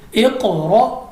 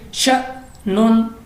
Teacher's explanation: हमज़ा के ऊपर हमारे पास जज़म है, तो हम इसको झटका देकर पढ़ेंगे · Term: हमज़ा साकिन